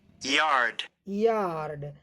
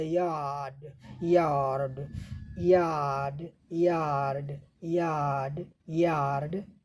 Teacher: अब इसमें थोड़ा अमेरिका में र ध्वनि आ रही है, अमेरिका में यार्ड, यहाँ र ध्वनि आ रही है, लेकिन ब्रिटेन में ये र ध्वनि नहीं, केवल लांग हो गया, यार्ड यार्ड यार्ड यार्ड यार्ड यार्ड।